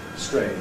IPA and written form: streɪnʤ (strange)